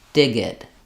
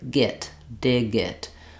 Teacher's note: So, for example, when you're trying to practice on dig, I would practice saying dig it. And you can think about the G going on the next word, git, dig it. That can help you get the voicing on the G sound in fluent speech. Otherwise, really thinking about lengthening that vowel is the main difference between a voiced and a voiceless consonant.